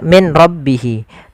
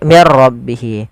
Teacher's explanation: suara nunnya dimasukkan ke ro dan diganti menjadi R maka menjadi mirro maka menjadi diganti dengan ro maka mirro Kemudian · Langkah pertama, suara nunnya dimasukkan ke ra dan diganti menjadi r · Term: idgham bila ghunah, idgham bila gunnah